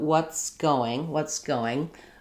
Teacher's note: Going from what's going, basically there's not much happening there in terms of linking. My S just kind of continues, and then I start my G of going